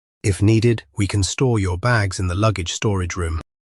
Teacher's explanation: When can is used in an affirmative sentence, it usually has no vowel sound and sounds like kin.